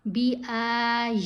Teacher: اس میں 3 آوازیں لمبی ہیں, الف کی, یا کی اور ہا کی.